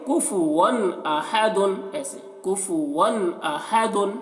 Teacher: تو یہاں پر واو اظہار واقع ہو رہا واو کے اوپر، تو اس تنوین کو ظاہر کر کے پڑھیں گے، یہاں پر غنہ نہیں کرنا ہے